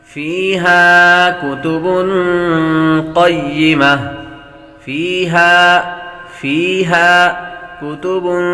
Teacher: فیہا کتب قیمہ فیہا کتب قیمہ فیہا کتب بابر تنوین ہے، تنوین کے بعد قاف حروف اخفاء میں سے آ رہا ہے، غنہ کریں گے۔